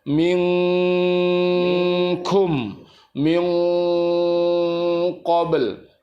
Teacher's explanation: untuk kaf sama kof itu masuk di pangkal hidung dan disertai dengan suara sengau membentuk bunyi eng. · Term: ikhfa hakiki